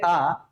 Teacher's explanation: पश्च स्वर मतलब पीछे वाले हिस्से का, जीभ के पीछे वाले हिस्से का ज्यादा प्रयोग किया जाएगा। तो अगर आगे देखें पश्च स्वर में कौन कौन से वर्ण आएंगे, तो आ छूट गया था, आ उच्चारण करोगे आ, तो पीछे वाला हिस्सा है ना, ना तो बीच वाले का ज्यादा प्रयोग है ना ही आगे वाले का।